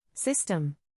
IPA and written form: ˈsɪs.təm (System)